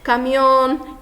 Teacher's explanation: a gente observa aí que caminhão, a sílaba tônica recai no on